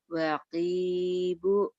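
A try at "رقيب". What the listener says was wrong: Ro. Bukan wa. Raqibu.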